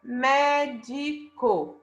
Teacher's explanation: Qual a sílaba tônica é a antepenúltima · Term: proparoxítona